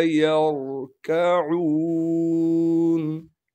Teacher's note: را ساکن سے ملائیں گے، اس لیے کہ را ساکن ہے، را ساکن سے پہلے زبر ہونے کی وجہ سے را کو موٹا کر کے پڑھیں گے